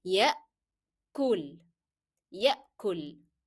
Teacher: So because it is having that combination, it's having fatha and then alif. So you will go up lengthening and then don't forget to make the glottal stop of hamza.